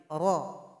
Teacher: Yaitu ujung lidah tempelkan ke langit-langit. Ra ini punya sifat yang namanya takrir, harus ada pengulangan. Namun jangan banyak.